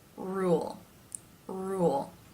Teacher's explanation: further back part of the tongue that is raised o then to make the L sound which here is the dark L because it's at the end of the syllable · the word rule begins with the R consonant sound when words begin with this sound the lips tend to take a pretty tight position or rule of course in the you as in boo sound